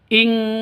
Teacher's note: Nun matinya ditambah dengan ng. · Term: ikhfa hakiki